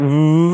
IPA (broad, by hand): v